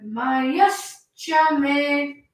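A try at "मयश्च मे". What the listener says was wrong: Me is going down. You must hold it.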